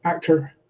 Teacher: In an American accent, it would be a schwa with an R colouring at the end, actor. In many students' accents, they prefer to keep the full value of the O.